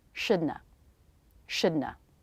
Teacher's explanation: The tongue position for D and N is almost the same. Shouldna. Then just release the tongue to make the schwa.